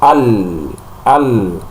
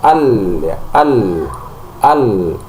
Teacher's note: Nah, ketika kita mengucapkan lam al ya suaranya ada tapi hembusan udaranya itu bisa dikatakan ee minim bahkan tidak ada al ya al jadi perlu dibedakan ee suara dengan nafas. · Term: jahar